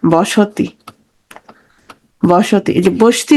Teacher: সংযুক্ত ব্যঞ্জন ধ্বনির মাঝখানে স্বরধ্বনির আগমন ঘটবে